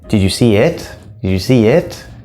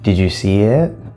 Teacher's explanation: So we start going down for it, but then we get pulled up by the question tone.